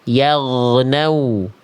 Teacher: Manyun, monyong ya, muncung, maju nih. Makhraj tempat keluar dari huruf waw itu dilafalkan dari kedua bibir dengan posisi maju seperti pengucapan huruf U. Nah, jadi bentuknya vokal U nanti.